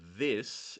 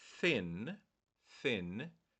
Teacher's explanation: the word this is a voiced this but the word thin thin is unvoiced